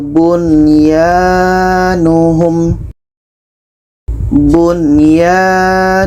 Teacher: Nun jelas Ya jelas dan tidak ada dengung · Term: izhar wajib